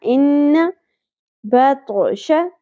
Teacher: ان نون مشدد غنہ ہوگا، زبر کو زیادہ نہیں کھینچنا، ان نہیں پڑھنا، ان بطش تو ساکن پہ قلقلہ ہوگا، تو کو ہر صورت پر پڑھنا ہے